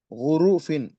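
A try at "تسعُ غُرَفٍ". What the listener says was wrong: را کے اوپر زبر آئے گا. اچھا غرفن. تسعو غرفن.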